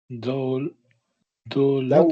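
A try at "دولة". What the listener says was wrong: Dawlat. the word, you don't pronounce the ta marbuta, you just pronounce a ha. Dawl. Dawla.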